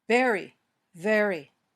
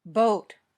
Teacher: your top teeth touch your bottom lip then air comes out gently there's no popping motion this sound is also voiced pay attention to the position of your lips and teeth both